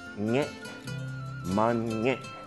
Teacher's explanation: A glotta marks a glottal stop, a tightening of the back of the throat to cut off the sound abruptly